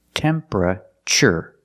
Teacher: Not temperature, but temperature. The TU makes a ch sound like chicken.